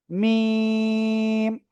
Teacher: দুই ঠোঁটের শুকনো জায়গা থেকে আপনাকে এই অক্ষরটা উচ্চারণ করতে হবে এবং এখানে 4 আলিফ টেনে পড়তে হবে